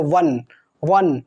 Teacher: जो व होता है उसका उच्चारण स्थान दंत औष्ठम, मतलब दांत और ओठ दोनों। आप व बोलो वन, वन, तो देखो आपका दांत टच होगा और होठ वन, होठ भी गोल बन रहा है।